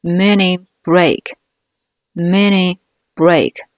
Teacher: 两个辅音连在一起，前一个词尾音的▁t▁失去爆破不发声，形成一个小小的停顿